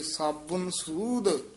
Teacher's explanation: ਥੋੜਾ ਜਿਹਾ ਕਸ ਕੇ ਬੋਲਣਾ ਔਂਕੜ ਲਾ ਕੇ ਬਬੇ ਦੇ